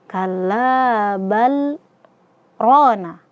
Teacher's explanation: Berhenti sejenak ya. berhenti sejenak tanpa mengambil nafas ya pada ee kedua kata ini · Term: saktah